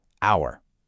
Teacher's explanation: That H is totally silent. We actually hear an O sound right at the start.